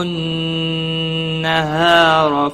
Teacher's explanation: نون مشدد پر گنہ ہوگا، ہا الف مدہ ہے، ایک الف کے برابر کھینچ کر پڑھیں گے، را زبر کی وجہ سے پر پڑھا جائے گا۔